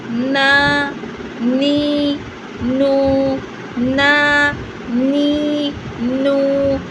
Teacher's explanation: Part of the sound remains in the mouth. Okay, the rest comes through the nose as gunna